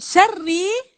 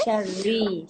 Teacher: Okey, syarri nipis je ro. Ro baris bawah nipis. Artinya kita ambil dia dalam keadaan dia ringan.